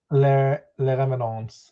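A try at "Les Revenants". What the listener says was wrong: I think you just don't pronounce the S at the end. So Le Revenant.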